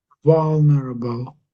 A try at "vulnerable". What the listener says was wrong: Your V still sounds. I guess it's the V and the U together. I guess is the tricky bit. This bit here.